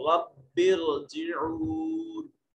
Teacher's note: جب ہم ان دونوں کلمات کو ملائیں گے تو یہ حمزہ وصلی جو ہوتا ہے، یہ جو حمزہ امر والا ہوتا ہے، یہ درجہ کلام میں گر جاتا ہے